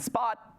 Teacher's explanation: it's complete closure right you don't breathe out you might even turn it into a glottal stop like spa